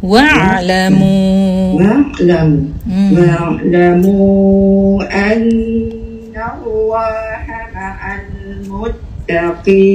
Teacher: Wa'lamu ain tu. Wa'lamu jangan wa tu panjang. Ain tu panjang.